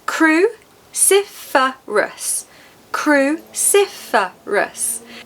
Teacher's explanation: 4 syllables. Cruciferous. Cruciferous. The second syllable is stressed.